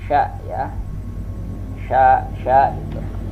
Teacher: Dan sya ini pun juga termasuk rakhawah, dia berlalu. Nah, kalau sya ini dia al-hamas, ada mengeluarkan udara atau napas di saat kita melafalkan huruf sya.